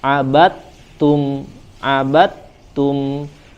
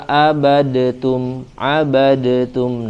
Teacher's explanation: ketika huruf dal bertemu dengan huruf ta harus diidghamkan